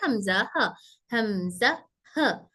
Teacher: छोटे हमारे सीने की तरफ से जो lower part of our throat है वहां से आने वाले हमजा ह